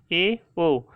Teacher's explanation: आधा मुंह बंद रहता है इन स्वर को बोलने पे, ए, ओ। इसीलिए इन्हें अर्धसंवृत बोलते हैं।